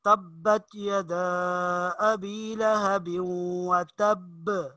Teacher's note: یہ آخر میں با ہے تو با کے اوپر قلقلہ کیا جائے گا، آواز اچھل جائے گی